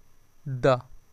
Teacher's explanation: द ट त ध तो अब देखिए द जब बोलना है तो द ठीक है जीभ आपके दांत से टच हो रही है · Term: दंत वर्ण